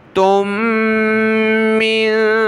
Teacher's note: تا کے بعد دو میم ہیں، پہلی ساکن اس کو چھوڑ دیں گے، دوسری میم جس کے اوپر یہ تشدید ہے تو اس کے ساتھ ہم نے تا کو ملانا ہے، ناک میں آواز پیدا کریں گے، پھر اس میم کو آگے نون ساکن کے ساتھ ملا دیں گے۔